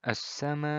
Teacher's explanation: Kalau mad tabi'i kemarin kita bahas 2 harokat saja, mad wajib muttasil adalah 4 atau 5 harokat. Jadi lebih panjang.